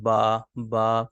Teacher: दोनों होठों के जो तड़ी वाले हिस्से होते हैं यानी कि जो गीले होते हैं जो हिस्से हमारे उनसे जो है ये बा अदा होता है